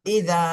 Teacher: জবরের বামে খালি আলিফ, মদের হরফ, এখানে এক আলিফ টান দিতে হবে।